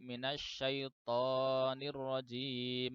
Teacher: Itu ya kemudian yang ketujuh itu adalah huruf to itu dibaca lebih dari 2 ketukan